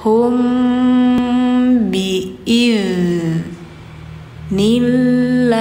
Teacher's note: ditahan dulu ya kalau setelah mimnya ada ba karena ini hukumnya ikhfa syafawi dengung